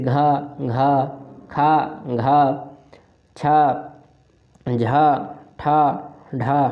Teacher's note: और महाप्राण में वर्गीय व्यंजनों के द्वितीय और चतुर्थ व्यंजन आते हैं, जैसे घा, घा, खा, घा, छा, झा, ठा, ढा। हमको बार बार सांस लेनी पड़ रही है क्योंकि यह महाप्राण व्यंजन है, इनमें सांस की आवश्यकता पड़ती है